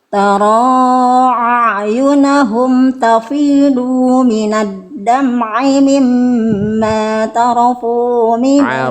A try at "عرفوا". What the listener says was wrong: Arafu, bukan tarofu, arafu. Ain, du, kepanjangan, du cukup satu harokat.